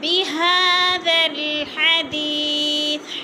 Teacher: حدی کی یا کو لمبا کریں گے، یا مدہ ہے · وَمَن يُكَذِّبُ بِهَذَا الْحَدِيثِ ہا کو پڑھا جائے گا، موٹا ہا، اور ذا نرم ہے، ذا کو لام کے ساتھ ملا کر پڑھیں گے۔ اگر بہذا ادھر وقف کریں گے تو آگے ساتھ الف پڑھا جائے گا، اگر ذال کو لام کے ساتھ ملائیں گے تو درمیان والے دونوں الف نہیں پڑھے جائیں گے۔